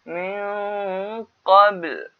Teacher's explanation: nun mati bertemu dengan qaf ikhfa min qabl dia dengung dan bibir muncung untuk menyebut menyebut huruf qaf, jadi kita muncung bibir min qabl, kita berhenti qabl, lam itu dibunyikan.